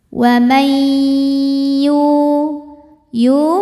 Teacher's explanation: ada wau mati didahului harakat dhamah cara bacanya dipanjangkan dua harakat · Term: Mad Thobi'i doohiri